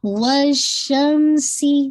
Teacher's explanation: سی کی کسرہ آپ نے باریک رکھنی ہے